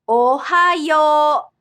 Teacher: Yo at the end is pronounced with a long sound O rather than OU.